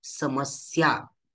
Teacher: तर समस्या स्या जे जोड अक्षर आहे त्यामधील पहिला अक्षर स याचा आपण जोर देऊन उच्चारण करतो